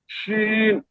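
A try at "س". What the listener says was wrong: না, না, শিন না, শিন তো এই যে উপরেরটা, এটা শক্ত করে পড়তে হবে। সিটি করতে হবে। সিন, সিন।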